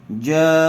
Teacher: حرف مدہ کے بعد اسی کلمے میں حمزہ آیا ہوا ہے اس لیے مد متصل کا قاعدہ ہوگا جیم کو کھینچ کر پڑھیں گے